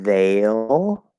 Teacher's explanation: it's supposed to be veil where it's the a diphthong plus a half l or dark l